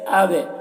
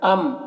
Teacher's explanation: با میں آواز دونوں لبوں سے مل کر سختی سے علیحدہ ہوگی، ٹھیک ہے، یعنی قلقلہ ہوگا